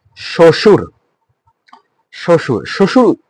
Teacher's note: ব ফলা রয়েছে। ব ফলা থাকার কারণে যেহেতু শুরুতে রয়েছে সেই কারণে এটা উচ্চারিত হয়নি